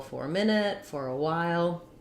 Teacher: I link by just having that R connect between the or and the schwa of so it sounds like for all one word, for a minute, for note that the in American English, typically we just say a schwa, an sound for that.